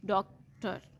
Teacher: the word डॉक्टर has, डॉक्टर में 2 syllables हैं with stress on first